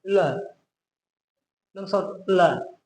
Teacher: दांत में हो, जीभ को सटा के बोल रहे हैं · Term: ल वर्ण